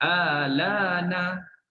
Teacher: Pendek hamzah istifham bila diibdalkan kepada alif. Jadi kita baca pendek je, 2 harakat je. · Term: qas